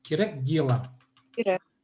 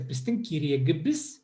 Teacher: И к у нас тогда озвончается. Потому что между двумя гласными попадает. Между е и и. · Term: к озвончается